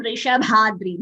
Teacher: Vrishabhadri. Bha is Mahaprana.